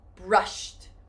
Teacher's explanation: Do you hear that T sound for the final syllable?